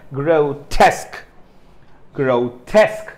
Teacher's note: so the second syllable is stressed here